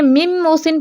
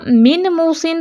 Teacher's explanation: نون ساکن کی آواز نہیں آئی، یہی ادغام تام بالغنہ ہے، کمپلیٹ مرجنگ ہے · نون ساکن کی اپنی آواز تو نہیں آ رہی نا، تو میم ڈائریکٹ اگلے میم سے مل رہا ہے